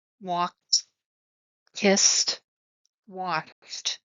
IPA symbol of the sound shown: t